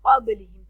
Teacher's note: क़ाबिलिहिम, क़ाफ नुक्ता वाला मोटा पढ़ा जाता है, बा जो है अब ये जज़म की सूरत में यहाँ कलकला करेंगे, मतलब हिला के पढ़ेंगे